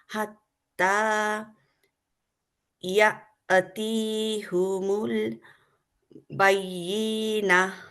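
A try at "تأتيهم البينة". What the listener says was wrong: না, তা আছে না, তা তিয়াহুমুল বাইয়িনা। তায়ে আপনি বলছেন ইয়া। লাইনটাতে তা, মানে তা তিয়াহুমুল।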